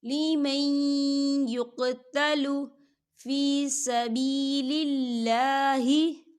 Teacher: ولا تقولوا لمن يقتل، لمن يقتل، دیکھیں لیمئی، یہاں دیکھیں نون ساکن ہے اور نون ساکن کے بعد یا آ رہا ہے، اور یا جو ہے حروف یرملون میں سے ہے تو یہاں پر ادغام ہوگا لیکن تھوڑا سا غننے کے ساتھ